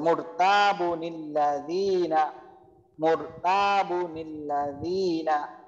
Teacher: আর নুন সাকিনটা চলে আসবে পরের শব্দে, এবং সেটা জের হবে, নুনের নিচে জের বসবে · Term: নুনে কুতনি